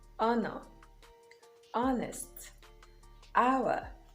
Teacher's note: the letter h is silent in words like honor honest hour